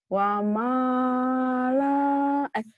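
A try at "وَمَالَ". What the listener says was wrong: Pendek atuh.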